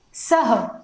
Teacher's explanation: स के पश्चात जब विसर्ग लग जाएगा तो इसका जो उच्चारण होता है वह होता है सह